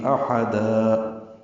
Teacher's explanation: احدا میں حمزہ اقصی حلق سے، ہا وسط حلق سے ادا کریں گے، اور دن کی جگہ دا پڑھیں گے، مد عوض بنے گی احدا۔